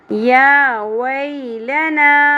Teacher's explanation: یا کے اوپر کھڑی زبر ہے، 1 الف کے برابر کھینچنا ہے. واو زبر کے بعد یا حرف لین ہے، نرمی سے پڑھنا ہے.